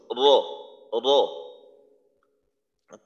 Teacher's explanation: অনেক সময় বলা হয় জিহ্বার আগার উল্টা পিঠ, উল্টা বললে নিচের দিকটা বোঝার একটা সম্ভাবনা থাকে। তো র উচ্চারণ করার সময় জিহ্বার আগার নিচের দিকের পিঠ না, উপরের দিকে। আসলে এটা পিঠ বলতে এমন না যে উপরের দিকের বড় একটা অংশ নিয়ে, বিষয়টা এমন না, জিহ্বার আগার সামান্য একটু উপরের অংশ র, র। · জিহ্বার আগার পিঠ তার বরাবর উপরের তালুর সঙ্গে লাগাইয়া উচ্চারিত হয়